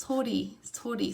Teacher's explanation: Sometimes you say so fast, I'm not even sure if my tongue actually even touches the roof of my mouth. There might be a slight gap, air gap, when I say this fast.